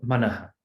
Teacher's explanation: When you have sakara at the end of the pada, it becomes a visarga.